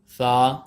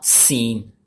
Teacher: دیکھیں دوستو، یہ سا اور سین ہے، ان دونوں کے اوپر سیٹی کی آواز کو بعض دوست نکال دیتے ہیں، لیکن ہم نے نہیں نکالنی ہے۔ یہ سا نرم حروف ہے اور یہ سین سیٹی والا ہے · سا کے اوپر سیٹی کی آواز نہیں نکل رہی، سین کے اوپر نکل رہی ہے